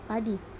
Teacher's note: vokal I tinggi atas depan tak bundar pada kata padi